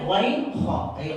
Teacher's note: آخر حلق سے غین خا نکلتا ہے، یعنی ایک ہی جگہ سے یہ دو حرف نکلتے ہیں.